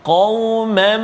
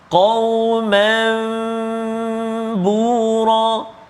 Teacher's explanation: Tertukar atau menukar sebutan nun sakinah ataupun tanwin kepada sebutan bunyi mim. Sebutan mim berserta dengan dengung. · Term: iqlab